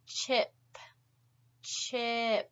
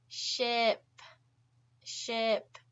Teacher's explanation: with the CH sound it's more forward in your mouth